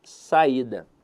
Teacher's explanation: a sílaba tônica dela está na penúltima sílaba então a verdade é que a palavra saída é uma paroxítona · Veja que a sílaba tônica dela está na penúltima sílaba.